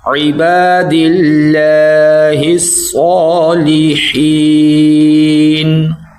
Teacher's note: اور یہ جو اللہ ہے باریک پڑھا جائے گا کیونکہ دال کے نیچے زیر ہے